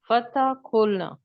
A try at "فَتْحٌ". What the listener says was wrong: فتحون، فتح نہیں کہنا، یا فتح کہیں یا فتح کہیں یا فتحون کہیں، تنوین آپ پڑھ سکتے ہیں لیکن فتح نہیں کہیں گے.